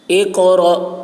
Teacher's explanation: قاف کی آواز موٹی ہوگی اور قلقلہ ہوگا. اقرأ، را پر اور جھٹکا لگے گا.